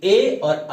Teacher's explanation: Next है उच्चारण स्थान के लिए कंठ तालव्य, यानी ऐसे स्वर जिनका उच्चारण कंठ से भी और तालु से, दोनों के मेल से होता है, उनको कंठ तालव्य कहते हैं।